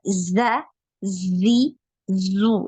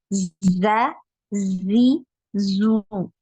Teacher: aliran nafasnya dia tertahan ya Jadi tidak ada aliran nafas ketika mengucapkan huruf Zai